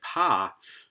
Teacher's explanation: voiceless aspirated stops like pa